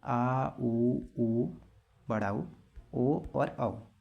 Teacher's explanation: पश्च स्वर, जीभ का पिछला हिस्सा जो भाग है वह कार्य करता है, जीभ का पिछला भाग कार्य करता है।